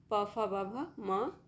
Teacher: दोनों होठों के स्पर्श से बोले जाने वाले वर्ण उ ऊ और प वर्ग प फ ब भ म और उ ऊ ये सभी ओष्ठ वर्ण होते हैं।